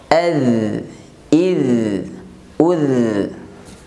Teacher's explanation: cara pengucapan huruf dza dengan suara tidak terhambat. Suaranya mengalir.